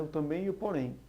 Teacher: Também e porém, a tonicidade é a mesma. A tônica realmente é a última, sendo uma palavra oxítona.